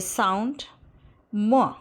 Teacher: Thus, m is a voiced bilabial nasal.